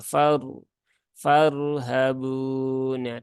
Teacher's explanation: tebal karena dia berhubungan dengan apa berhubungan dengan fathah ya n ro yang berhubungan dengan fathah dia di baca tebal